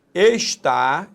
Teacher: sílaba tônica é a última, oxítona, terminada em A.